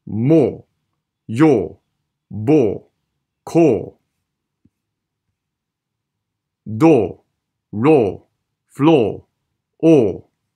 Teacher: 記得呢一啲嘅字例後面全部冇個schwa嘅